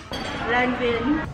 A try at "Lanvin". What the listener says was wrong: I say it wrong and she repeats the same. It's l'envin. Not l'en. No N. We don't pronounce the N. Not in this word.